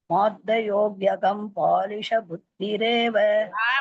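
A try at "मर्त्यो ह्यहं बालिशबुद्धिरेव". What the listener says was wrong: மார்த்தையோலாம் இல்ல. மார்த்தயோவா இருக்கு, மாவே இல்ல, மதானே இருக்கு.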